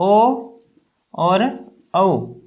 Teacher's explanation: कंठोष्ठ्य से आप दो स्वर पैदा कर सकते हैं, एक ओ और औ